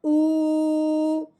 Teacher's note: اس حمزہ کو واؤ ساکن کے ساتھ ملاتے ہوئے ایک الف کے برابر لمبا کرنا ہے